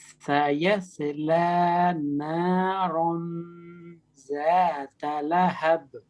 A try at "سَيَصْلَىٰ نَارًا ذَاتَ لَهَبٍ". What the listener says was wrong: سیصلا، ٹھیک ہے. ایک تو صاد ہے، دوسرا زا نہیں ہے، یہ ہے ذا. ذال پڑھنا ہے آپ نے. سیصلا نارا ذات لہب.